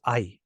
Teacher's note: actually just we still hold it down to two Beats but the sounds are ah and E so now the combination becomes I